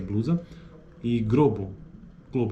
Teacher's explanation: presença de R em lugar de l em grupos consonantais